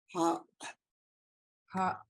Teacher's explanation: we would put a pinch or glottal after the vowel